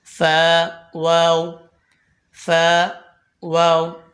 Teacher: फा ऊपर के दांतों के किनारे और नीचे के होठ की तरी वाले हिस्से से अदा होता है वाव दोनों होठों की गोलाई से अदा होता है कफ अभी · فا اوپر کے دانتوں کے کنارے اور نیچے کے ہونٹ کی تری والے حصے سے ادا ہوتا ہے. واو دونوں ہونٹوں کی گولائی سے ادا ہوتا ہے.